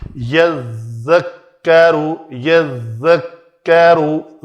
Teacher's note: ذال کا جو ہے نا مخرج وہ نوک لسان کو ٹچ کرے گی تو وہ جو بز کی سیٹی کی آواز ہے وہ نہیں آنی چاہیے